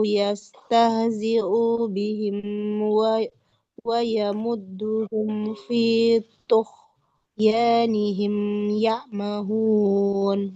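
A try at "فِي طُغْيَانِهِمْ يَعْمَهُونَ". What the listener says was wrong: Huruf gha-nya tuh ya, tidak tuh ya, bukan huruf kha tapi huruf gha. Tidak tuh ya tapi tuh ya. Nah, dialirkan suaranya fi tughyanihim ya'mahun.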